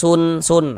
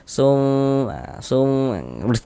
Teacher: sum itu suaranya kita tahan, kita panjangkan sejenak, kita gunahkan kita dengungkan. Sum fala la dibaca panjang ya.